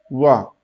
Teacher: वा का उच्चारण स्थान है। दंतोष्ठ।